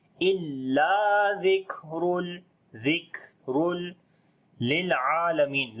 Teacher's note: تنوین کے بعد لام ادغام بغیر غننے کے کریں گے ، الا ذکر للعالمین لام کے اوپر صفت توسط ہوگی، عین